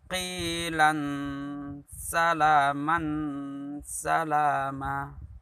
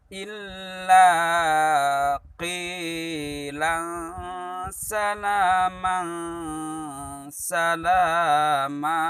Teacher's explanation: Seolah-olah ini huruf izhar. Lan terlalu jelas terdengarnya. Seolah seperti huruf izhar. Padahal ini adalah huruf ihfa.